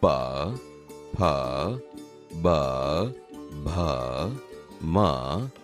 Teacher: તે બોલતી વખતે હોઠ એકબીજાને અડે છે, તેથી આ ઓષ્ઠ્ય વ્યંજન છે.